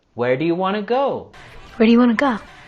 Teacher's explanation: With the words do you, we can pronounce do ya, and also the words want to, we can reduce that to wanna.